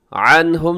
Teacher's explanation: عنہم نون ساکن کے بعد ہاں یہاں بھی اظہار ہے